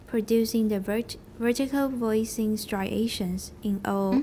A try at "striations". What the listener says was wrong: 没有 S.